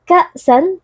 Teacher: ka merupakan hamzah yang sukun bersifat syiddah sehingga kita membacanya dengan suara yang tertahan